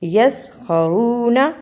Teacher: واو پر جزم ہے، یہ جزم والی واو واو مدہ کہلاتی ہے، اسے تھوڑا لمبا کرنا ہے